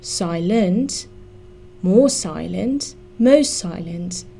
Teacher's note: the stress in silent is on the first syllable